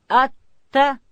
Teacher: تا ادا کیږي د ژبې سر به د لوړې زامې د مخ د دوه غاښو و بیخو ته وروړو.